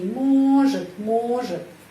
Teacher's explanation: Huruf O tetap huruf O. Может, karena dapat penekanan.